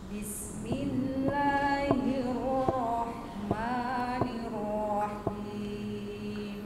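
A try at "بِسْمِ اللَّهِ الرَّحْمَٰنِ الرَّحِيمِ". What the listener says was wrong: Oke, nanti diatur suara ro-nya supaya tidak terlalu monyong. Karena ro tidak dimonyongkan, Bu. Gini suaranya. Hiru, hiru, hiru. Tidak hiru, tidak begitu mencucuk mulutnya ya.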